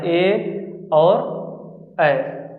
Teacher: ए और ऐ को कंठ तालव्य बोलते हैं क्योंकि ये कंठ से निकलता है और जीभ की सहायता से बोला जाता है